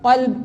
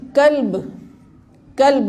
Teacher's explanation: یہ قاف نقطے والا حلق سے نکلتا ہے، یعنی گلے کے اندر سے، اور کاف جو ہے دوسرا وہ نکلتا ہے یہ دہن کے آخر سے، گلے کے شروع سے